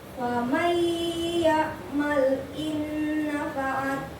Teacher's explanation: nun mati ketemu ya, maka dia bertasyid dan sedikit berdengung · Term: idgham diguna